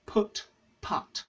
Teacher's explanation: people from the Midlands north of England and Ireland pronounce these two words the same hence the name put putt merger